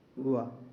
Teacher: जो वाह होता है वो दंतोष्ठ होता है, दांत और ओष्ठ